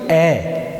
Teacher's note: ए का उच्चारण स्थल कंठ है, कंठ तो काम में आ रहे हैं और ए बोलते समय होठों को छूने की आवश्यकता नहीं है